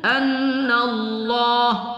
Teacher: lamul jalalah kita tebalkan kita tafkhimkan · Nun bertasdid kita baca wajibal ghunah